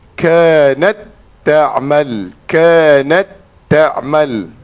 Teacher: pada huruf ta ni adalah sukun yang di dalam kategori lebihan hamas, lebihan yang ada angin